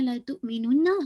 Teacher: حمزہ پہ جھٹکا واضح ہونا چاہیے